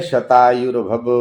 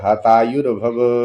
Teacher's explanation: क्योंकि उनको कहना तो है शतायुर्भव, अर्थात 100 साल तक जियो, परंतु वहां श के स्थान पर लोक भाषा के कारण ह हो जाता है